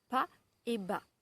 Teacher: Dans ces deux syllabes, la différence tient du voisement, ce qu'on appelle le voisement de la consonne. C'est-à-dire que dans pas, j'ai le P, qui est une consonne plosive non voisée, c'est-à-dire que mes cordes vocales ne marchent pas et ne vibrent pas.